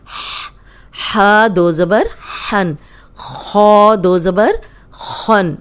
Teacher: اب ہن یہ حروف حلقی ہے، حلق سے نکالے یہ ساؤنڈ آئے گی